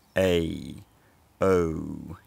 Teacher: the quality of the vowel changes as you say them, so it's a diphthong. And that change is because the tongue is getting higher in the mouth, so it's a raising diphthong. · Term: raising diphthongs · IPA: ɛj əw